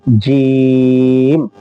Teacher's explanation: زبان کا بیچ، اس کے مقابل اوپر کا تالو